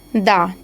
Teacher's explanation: स्पर्श भी है, दंत भी है, सघोष भी है और अल्प प्राण भी ये वर्ण है